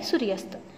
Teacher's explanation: म्हणजे हे दोन्ही वर्ण समान आहेत आणि त्या 2 वर्णांची संधी होऊन आपल्याला स्वर भेटलेला आहे आ, म्हणजे याच जातीतील दीर्घ स्वर भेटलेला आहे आ आणि शब्द तयार झालेला आहे सूर्यास्त.